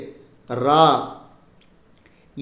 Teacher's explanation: நாவின் நுனி மேல் அன்னத்தின் மையப்பகுதியை உரசுவதால் தோன்றும் எழுத்து